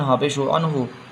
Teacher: یہاں پر اظہار ہوگا، نون ساکن کے بعد ہا آیا ہے، حروف حلقی میں سے